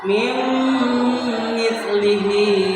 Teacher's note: Bacaannya harus dimasukkan dan dimasukkannya harus dengan dengung. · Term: idgham bigunnah